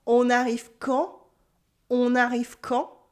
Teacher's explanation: On arrive quand, with my voice going up.